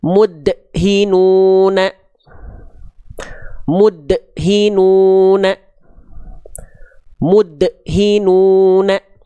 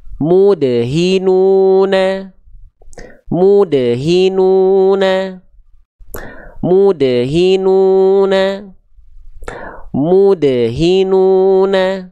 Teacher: dilafalkan pantulannya dengan pantulan yang tertahan maka ini kesalahan